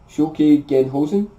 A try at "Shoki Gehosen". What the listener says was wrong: Shoki Gehosen. Yeah, you added an end, but you're pretty much there.